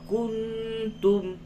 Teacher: نون ساکن کے بعد تا ہے، اخفا ہوگا